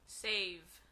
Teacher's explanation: Pronuncie la V labiodental al final.